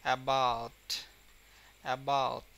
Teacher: যেমন অ্যাবাউট, অ্যাবাউট, এখানে কিন্তু এ স্ট্রেসটা কম, বাট এর এখানে অ্যাবাউট, বাউট, এই বাউটের উচ্চারণটা কিন্তু অনেক মানে চাপ দিয়ে দিতে হয় স্ট্রেংথ নিয়ে